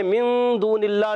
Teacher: غنہ کریں گے من دون اللہ میں، نون سائن کے بعد حرف اخفا ہے، اخفا ہوگا. غنہ کریں گے، نون کو چھپا کر ادا کریں گے. دون اللہ واو مدہ ہے اور اللہ پاک کے نام سے پہلے زیر آیا ہے، اللہ پاک کا نام باریک ہو جائے گا.